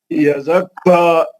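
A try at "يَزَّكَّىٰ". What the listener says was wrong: نہیں یزکا نہیں غلط. توڑ تو کیا ملا کے نہیں پڑھنا، توڑ کے پڑھنا. نہیں ملا کے نہیں پڑھنا.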